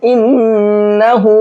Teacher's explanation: غنہ کرنے کی وجہ یہ ہے کہ نون کے اوپر تشدید ہے، اور نون پر تشدید ہوتی ہے تو نون میں غنہ کر کے پڑھتے ہیں، یعنی کہ آواز کو ناک میں چھپاتے ہیں۔ انہ، اس طرح سے۔